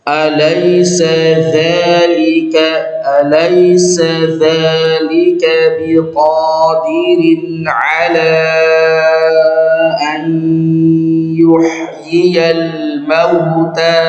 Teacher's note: Ini idgham di gunnah, masuk kemudian dengan gunnah, ya, idgham di gunnah naqis ya. Jadi tetap nunnya ada suaranya. Jadi harus ada masuk hidungnya. Tidak boleh bersih, tidak boleh bersih.